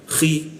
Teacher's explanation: Khi posisinya di mana? Di atas jakun dia. Khi ada seperti ngoroknya dia.